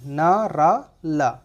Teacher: हमारी जो जबान का अगला भाग है वो ऊपर मसूड़े को स्पर्श करेगा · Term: बत्स्य व्यंजन